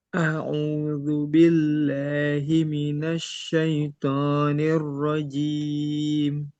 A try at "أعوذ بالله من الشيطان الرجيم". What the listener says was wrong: Nah, toknya maksimalkan. Jangan to, gitu ya. Ditekan lagi. To. Sama itu dengan makhrajnya tak, dengan dal. Jadi satu makhraj. To, po. Roknya ditebalkan lagi.